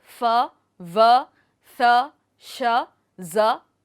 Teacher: अब जब हवा के मार्ग का ठहराव पूरा नहीं होता है, यानी वाक अंग घर्षण पैदा करने के लिए काफी करीब हैं, लेकिन हवा को पूरी तरह से बंद करने के लिए पर्याप्त नहीं है, तो हमें घर्षण मिलता है जिससे संघर्षी ध्वनियां यानी फ्रिकेटिव्स का उत्पादन होता है, जैसे फ, व, थ, श, ज आदि।